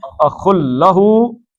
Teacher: اخل لہو، اخن تھا اور نون ساکن ہے اس کے اندر تنوین کا، تو نون کے بعد لام آ جائے تو کیا پڑھتے ہیں جی؟ نون پڑھتے ہیں؟ نہیں پڑھتے ہیں، لام ہی پڑھتے ہیں. اخل لہو 2 حرکتیں ہو گئیں.